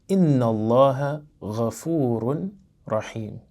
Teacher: we don't actually pronounce the voweling at the end of an ism once we complete an ayah or sentence